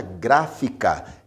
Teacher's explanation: porque a sílaba mais forte, a sílaba tônica, é gra, a primeira sílaba, a antepenúltima sílaba no caso. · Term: proparoxítona